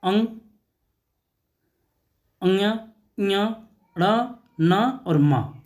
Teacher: यह जो कुछ ध्वनियाँ हैं क्या है, हमारे नाक के माध्यम से निकल रही हैं। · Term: नासिक